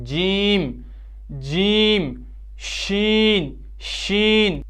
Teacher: جب زبان کا بیچ والا حصہ اوپر تالو سے ٹکراتا ہے تو کیا ادا ہوتے ہیں؟ جیم شین یا متحرک و یا لین